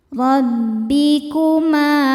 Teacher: Ro dibaca tafkhim karena berharokat fathah. Cara bacanya ditebalkan. Rabbikuma. Ma hukumnya mad tabi'i dhahiri sebab ada alif didahului harokat fathah.